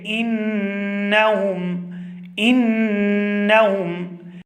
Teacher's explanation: انہم، یہاں پر جو نون ہے وہ تشدید کے ساتھ ہے اور یہاں پر غنہ زمانی ہوگا اور اس کی آواز ہم ناک کے بانسے سے ادا کریں گے اور اس کی جو مقدار ہے وہ 1 الف کے برابر ہے، یعنی کہ 2 سے 3 سیکنڈ ہم اس کو کھینچ کر ادا کریں گے